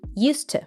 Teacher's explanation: we have a D and T together. Usually we just pronounce one of them. So when he said used to, dropped the D sound.